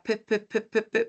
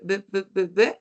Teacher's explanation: es bilabial y es oclusivo, según el modo, y además es sordo